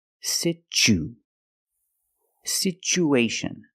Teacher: the second syllable is the long oo like Boot and moon situ situation we have two vowels together the U and the